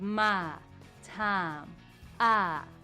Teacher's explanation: The diphthong I, that has two elements, I, is drawn out and lengthened to one sound, ah. So my time, I, becomes my time, ah.